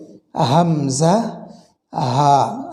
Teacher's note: কণ্ঠনালীর একদম শুরু থেকে এটি উচ্চারিত হয়। কণ্ঠনালীর একদম শুরু বলতে এই নিচের দিক থেকে এটি বোঝানো হয়েছে, এখান থেকে উচ্চারিত হবে হামজা হা।